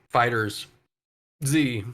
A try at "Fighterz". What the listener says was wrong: Fighters Z, you boomer. It's just fighters, dude. Like, well, the Z is there, but it's like, being cheeky.